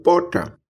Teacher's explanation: Aqui no interior da Paraíba, como em boa parte do interior do Nordeste, temos a pronúncia de uma fricativa aspirada R